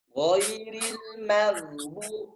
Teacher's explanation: Maknya tipis. Menghadapi ghain. Jangan dibikin tebal.